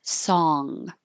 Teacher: song with an ah and the ng in the back.